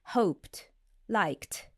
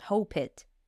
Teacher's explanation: we would pronounce the ending ed as t after voiceless consonant